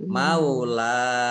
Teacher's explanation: lam fathah berdiri, mat tobi'i panjang 2 harokat. Kemudian kumnya pendek, ya tidak ada panjangnya.